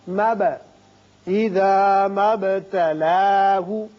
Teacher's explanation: با ساکن ہے، اس کی صفت قلقلہ ادا کریں گے، مد نہیں پڑھیں گے.